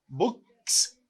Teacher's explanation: These are voiceless sound before the letter S.